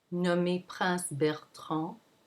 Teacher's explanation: that it does not follow the regular flow of the sentence it's going to stay low and only the last syllable moves up slightly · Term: phrase in opposition